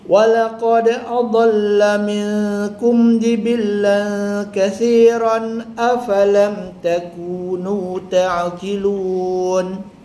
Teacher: Walaqad, dal tu kita pantulkan sikit